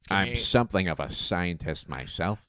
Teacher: He's got this almost kind of uh lispy whistly S's. >> So, see, I'm sort of saying it through my teeth.